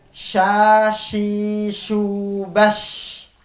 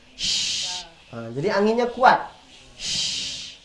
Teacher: Shin ini dia di tengah lidah dan dia sifatnya tersebar seluruh angin ketika kita mengucapkannya. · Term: tafasyi